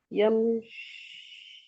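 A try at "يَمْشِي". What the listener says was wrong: Yamshi. It is Yamshi. Remember, it's a different pattern because it does not have a Dhamma at end. Because the Ya does not accept Dhamma. It needs a Kasra before. So we say Masha Yamshi.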